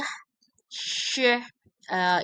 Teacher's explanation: sh is articulate further back in the mouth